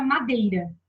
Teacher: Eu tenho a vogal e uma semivogal dentro da mesma sílaba. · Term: encontro vocálico